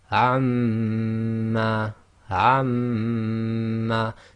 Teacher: your lips are still coming together as the normal makhraj of mim, but you're vibrating the sound in your nasal cavity. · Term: ghunna